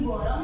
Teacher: Ini adalah bentuk distorsi vokal di mana vokal belakang U terdengar seperti O karena kurangnya kontrol bibir yang membulat. Secara fonetis, U memerlukan pengucapan dengan lidah tinggi dan bibir membulat penuh.